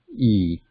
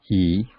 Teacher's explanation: the lips are stretched horizontally, not very wide open, E, but widely stretched sideways, and then the tongue is raised towards the roof of the oral cavity.